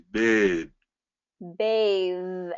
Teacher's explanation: they're both voiced meaning your vocal cords are on you're getting that vibration in your throat